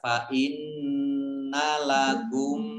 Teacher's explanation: Fa inna lakum, mim sukun bertemu dengan huruf mim itu hom mimi atau itu hom mutamasilain, mimnya dibaca gunnah mendengung, ditandai ada mim tasdid ditahan 2 harokat.